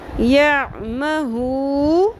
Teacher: ہ پیش واو ہو ایک الف کے برابر مد اصلی ایک الف کے برابر اس کو لمبا کھینچیں گے